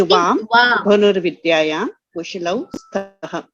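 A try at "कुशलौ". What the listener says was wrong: Kushalau. It will not be kushlau. It will be kushalau. Because the shakara has an after it. Otherwise, there would have been a stroke below the, like how you have it with asam, right? So then it will be kushlau. But this is kushalau.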